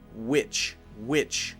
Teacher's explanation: need to say the T so Scarlet Witch Scarlet Witch and there we are saying the W sound so make sure it's witch not vich